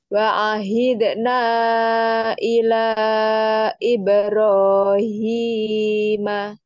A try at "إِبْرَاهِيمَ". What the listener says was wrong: Ibrahim cukup 2 harokat.